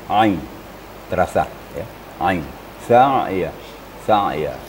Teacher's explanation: Ain itu makharijul hurufnya atau makhrajnya adalah di tengah-tengah tenggorokan.